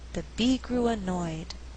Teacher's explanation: instead of stressing each content word in that cluster the speaker may choose to alternate the stress so that there is a more natural flow and Rhythm examples · in this sentence we have three content Words Be grew annoyed but I choose not to stress grew so that I have alternating stress